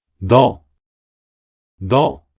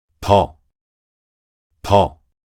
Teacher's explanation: foreign learners of Korean may perceive the consonant neun as the alveolar sound d good, which has the same place and manner of articulation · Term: initial consonant neun